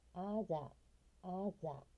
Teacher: あるいはです。ホスピタル、ホスピタル。これは病院。ナチュラル、ナチュラル。これアクセントはナーに行きます。ナチュラル。自然とか当然とかそういうことです。These、These、これはさっきも何度も言うように、上の歯と下の歯で、上の歯と下の歯で舌を噛む。These、These、これら▁This▁の複数形になります。▁Sing、Sing、これは物とか物、ね、everything▁とかよく使う、ね、物とか物事とかいう意味で、これも▁th▁の発音が上の歯と下の歯で舌を噛む。sing、sing、▁練習しておきましょう。but、but、▁これはしかし。other、other、このザも実は▁ TH▁の発音で濁ります。